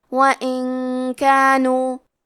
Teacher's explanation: کلمت وَإِن کے آخری میں نون ساکن ہے، پھر حرف الکاف آتا ہے کلمت کانو، کاف حروف الاخفاء میں سے ہے، اخفاء کا معنی ہے چھپا دینا، تو ہم نون ساکن کو چھپاتے ہوئے اور غنہ کے ساتھ یہ حکم کو ادا کریں گے